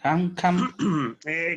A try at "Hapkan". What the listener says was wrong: Quítale la N y la M, no lleva. Hapkan. Hapkan.